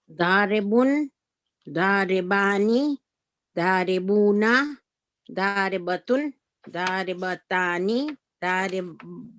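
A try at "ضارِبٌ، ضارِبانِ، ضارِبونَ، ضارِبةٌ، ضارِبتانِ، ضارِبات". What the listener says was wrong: Ahsanti, excellent.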